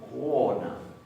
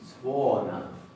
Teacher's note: Hay una leve diferencia de tono que es como si le pusiéramos una pequeña U. En el caso de la O con tilde, directamente es OU.